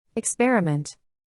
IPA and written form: ɪkˈsper.ɪ.mənt (experiment)